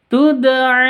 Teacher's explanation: itu karena ikhfa H Hakiki tuda di sini ada Dal sukun Dal sukun harus dipantulkan